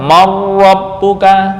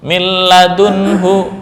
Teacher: Man rabbuka, setelah digabung marabbuka, sifat nunnya hilang